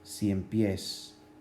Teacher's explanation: Cien está la I y la E, y en el otro también está en la otra sílaba pies, que tiene también un diptongo, IE. El énfasis está en ciempiés en la última sílaba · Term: aguda